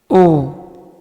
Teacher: जब ओ बोलोगे तो कंठ और ओष्ठ दोनों आएंगे